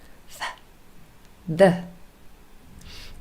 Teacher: we call these dental sounds, and that is really because you can see the tongue is between our teeth